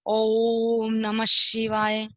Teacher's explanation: तो ओम वो लंबा स्वर जाता है ना, तो होता है प्लुत स्वर। क्योंकि ओ के आगे देखिए ये चिन्ह दिया गया 3 बना के और उसमें से ये लाइन निकाली गई।